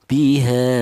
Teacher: Kalau sudah menjadi majaz munfasil ini panjangnya yaitu dua alif setengah atau lima harakat ya. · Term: mad jaiz munfasil